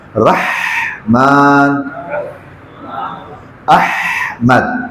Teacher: جب آپ ہا کو ساکن کریں گے تو آپ کا سانس جاری رہے، لمبا سانس جاری رہے